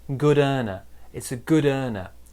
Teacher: we join the d and the e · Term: linking